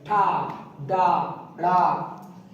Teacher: ये मूर्धन्य टा, जीभ आगे आएगी, मुंह से बोले जाएंगे ठा, डा, ड़ा।